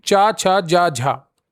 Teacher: चा, छा, जा, झा उच्चारण करते समय हवा मुख के अंगों को स्पर्श करते हुए कुछ संघर्ष रगड़ के साथ निकलती है। इन्हें स्पर्श संघर्षी व्यंजन कहते हैं।